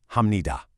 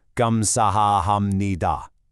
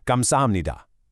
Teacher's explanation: Even though that third syllable is written with a P sound, when you speak it naturally, it completely blends into an M sound. So, it sounds like "hamnida".